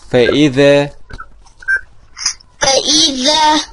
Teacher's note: أخرج لسانك في الذال. وأخرج الذال طرف اللسان مع أطراف الثنايا العليا